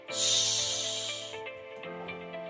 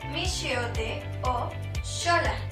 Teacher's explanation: Shh. Para pronunciar el sonido, tienes que colocar la punta de la lengua detrás de los alvéolos y dejar salir el aire.